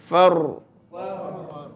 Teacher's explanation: nak tafkhimkan ra tu ada takrir dia